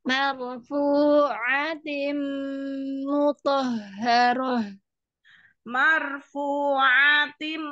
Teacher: dengungnya tim panjang ya